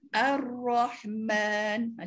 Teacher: Janganlah terlampau bergetar pula. Tidak. Setakat sekali dua je. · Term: takrir